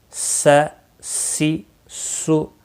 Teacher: سین زبر سا سین زیر سی سین پیش سو سا سی سو حروف صفیریہ کا سٹی والے حروف میں سے ہے تو سٹی کی آواز آنی چاہیے